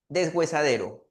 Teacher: esa sílaba we en realidad no está sonando como si hubiera presencia de H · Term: sonido de G